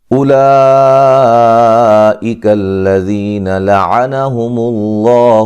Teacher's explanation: لفظ اللہ کو موٹا ادا کریں گے، اس سے پہلے حرف پر پیش ہے